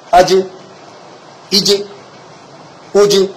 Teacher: یہ غلط ہے کیونکہ قلقلہ کے ساتھ میں تشدید کی بو آ رہی ہے، تو اس لیے قلقلہ بھی جلد کرائیں